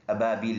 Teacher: ابابیل ہے، لیکن جب رکیں گے تو یہ زبر سائلنٹ ابابیل بن جائے گا